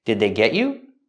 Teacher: So the D at the end of did is a stop D. Did, not did, but did they.